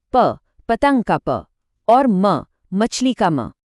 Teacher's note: ओष्ठ्य, जिसमें दोनों होंठ एक दूसरे से मिलते हैं। ये बोलना सबसे आसान है, जैसे प, पतंग का प, और म, मछली का म।